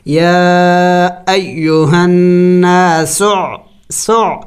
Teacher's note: عین حروف حلقی میں سے ہے، اور ظاہر کر کے پڑھیں گے، حلق سے ادا کریں گے